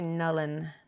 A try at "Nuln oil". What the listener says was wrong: See, that's wrong. There's no U after the L. Nullen. Additional letter. Nuln oil. Say film for me. Say film. You're going to go watch a film. the M to an N. This is nuln.